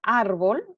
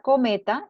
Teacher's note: la sílaba tónica recae sobre la penúltima sílaba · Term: palabras graves o llanas